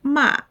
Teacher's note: if you say ma with a sharp falling tone, it means to scold.